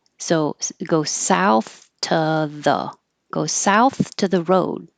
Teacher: This to will change to t.